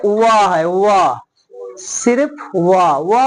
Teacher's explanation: व वर्ण है जो दंत और ओस्ट से बोला जाता है